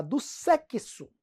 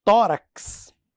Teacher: o dífono traz o x representando KS